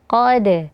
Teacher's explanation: huruf dal sukun sebelumnya huruf qaf, maka dikolkolahkan dan qafnya ditebalkan